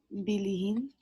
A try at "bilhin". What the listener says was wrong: bilihin. In this special case, we kind of omit this second I. We will just say bilhin. Bilhin.